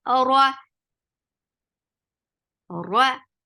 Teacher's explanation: Ra is heavy because there is fatha. Whenever ra is with fatha or dhamma, it is always heavy.